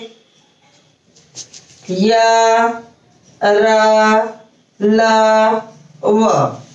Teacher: ना तो हम पूरी तरीके से मुंह को खुला रख सकते हैं और ना पूरी तरीके से आपकी जिह्वा, होंठ, तालु या मुंह के किसी अन्य स्थान पर जाकर टकरा रही है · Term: अंतस्थ व्यंजन